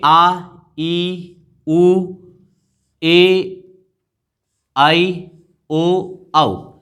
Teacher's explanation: दीर्घ स्वर जिनका मात्रा काल होता है 2, तो ये आ, ई, उ, ए, आई, ओ, औ, ये दीर्घ स्वर कहलाते हैं।